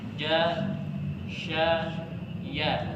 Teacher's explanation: Ya, makhrajnya tidak tertutup sempurna dan pangkal lidah menurun ke bawah. Jadi huruf ya ini ya, semakhraj dengan huruf jim dan shin.